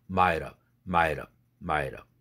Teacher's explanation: 그래서 might of가 되죠. 그런데 t가 링크돼야 되니까 might have가 되죠. 그런데 그 t를 또 플랩 시켜야 되죠.